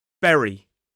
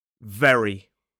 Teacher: for the B sound, we must close our lips like this, B, B, B, and the V sound, the teeth are involved